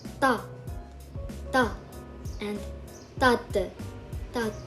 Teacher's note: pronounced in a degree between the sound d and t in English, of course, at the beginning of a word, and as t at the end. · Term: Tikut